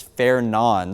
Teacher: I've been doing some digging and watching other meteorologists and National Weather Service employees pronounce it as Fernan. So obviously it looks like Fernand. The D is silent.